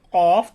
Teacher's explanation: জিহবার গোড়া তার বরাবর উপরের তালুর সঙ্গে লাগাইয়া দুই নক্তা ওয়ালা কফ